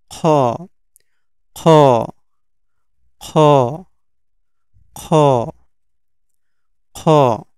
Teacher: খ উচ্চারণ হবে হচ্ছে হলকের শেষ থেকে, এটা হচ্ছে হলকের শেষ, এইখান থেকে উচ্চারণ হবে খ, খ, খ, খ, খ।